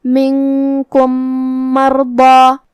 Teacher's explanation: میم حروف الادغام میں سے ہے، تو ہم پہلے میم کو دوسرے میم میں ملا کے ایک ہی میم غنہ اور تشدید کے ساتھ ادا کریں گے